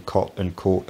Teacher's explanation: in many north american dialects the vowels in cot and court are pronounced identically